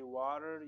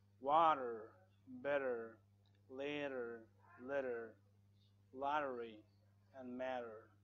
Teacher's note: So here the T is between A and E, so you say water, you remove the T and put R sound just to make it like an American person